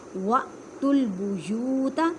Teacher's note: حمزہ ساکن ہے اس وجہ سے اسے جھٹکا دے کے پڑھیں گے